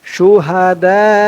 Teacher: দা বলে চার আলিফ টান দিয়ে এই হামজাকে ধরবে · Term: মধ্যে মুত্তাসিল